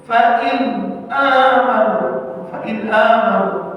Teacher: Nun bunyi nun tu mati tu dijelaskan tanpa idgham ataupun ikhfa. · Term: izhar